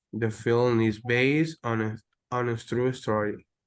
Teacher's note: you can hear how your voice rises up when you're saying film, based, and true story